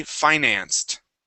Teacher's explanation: personally I say Finance okay with a long eye